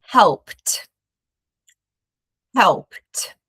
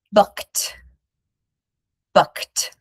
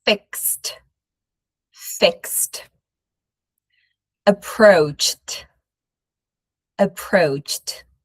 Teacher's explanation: What happens when we have a voiceless sound verb is we're going to pronounce a T sound at the end of the verb in the past.